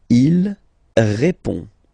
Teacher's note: Il répond. So, final D is not pronounced. You only have this on nasal sound at the end.